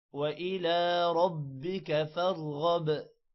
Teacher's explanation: وَإِلَى لام پر کھڑی زبر ہے، تھوڑا سا لمبا کریں گے